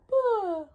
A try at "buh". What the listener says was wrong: Relax up here. I think your lips are really heavy.